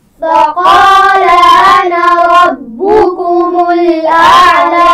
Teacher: قاف کو موٹا پڑا جائے گا